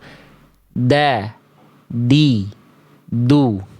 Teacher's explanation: Ujung lidah ke pangkal gigi dari atas. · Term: huruf dal